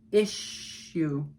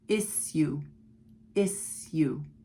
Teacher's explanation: sometimes in British English, it's issue, issue, no SH · in America, it's pronounced with an SH, issue. First syllable is stressed, issue.